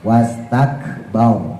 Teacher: Wastakbar barnya tebelin ya karena rnya jatuh setelah harakat fathah. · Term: ditebalkan